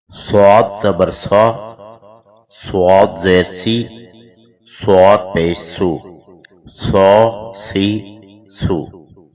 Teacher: حروف صفیریہ کا تیسرا حرف صاد مفخم مستعلی یعنی پر یا موٹا پڑا جانے والا حرف ہے۔